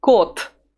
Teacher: The letter there is at the end of the word, so it loses its voice, and it becomes T.